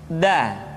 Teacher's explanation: Da diucapkan dengan menyentuhkan ujung lidah kita dengan bagian gusi-gusi dua gigi seri bagian atas. Da. Nah, kesalahan yang sering dilakukan adalah menyentuhkan ujung lidah dengan langit-langit.